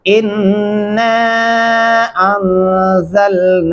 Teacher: अलीफ को नून के साथ मिलाते हुए आपने लंबा करना है, क्योंकि अलीफ और फिर 2 अल्फी मद्दा है ऊपर, ये साथ में है, इसलिए इसकी आवाज को लंबा किया जाएगा और गुन्ना भी करना होगा।